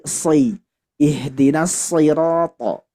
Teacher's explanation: Hati-hati, ketika kasroh itu lebih rentan terjadi penipisan, sehingga kalau tipis jadi huruf sin. Sedangkan huruf sod dia sifatnya tebal.